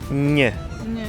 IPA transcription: ɲ